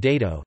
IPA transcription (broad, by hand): ˈdeðo